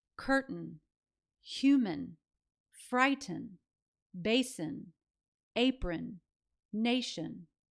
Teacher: Now, the spelling variations are a bit different again, but they all represent the same sound, that schwa, and then the N that follows. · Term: schwah